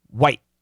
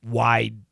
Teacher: open wide and when we say white it's usually quicker okay because the T doesn't need any vibration it's just boom white but the D we're going to need some vibration